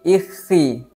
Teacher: Sehingganya dengan sifat infitah inilah huruf kha menjadi lebih tipis di saat dibaca berharokat kasrah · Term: kha berharokat kasrah